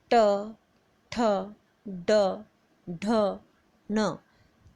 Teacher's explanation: इनमें जो हमारी जीभ है वो तालु से तो स्पर्श होती है, साथ ही बिल्कुल ऊपर जाके लगती है। गले से ऊपर के पहले जो तालु के ऊपर खड्डा सा है वहाँ पर जाकर लगती है। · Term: मूर्धन्य